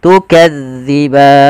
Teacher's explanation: dia pelafalannya di ujung lidah kita menempel dengan gigi sari. Ya, maka gigi sari atas. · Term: zal